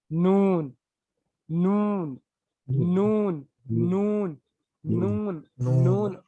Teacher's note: लाम जहां से निकल रहा ना, आप क्या करना, वहां से एक दाढ़ छोड़कर जहां पे जबान लगा रहे हैं आप ऊपर की तरफ मसोड़ों को, तो वहां से निकलेगा नून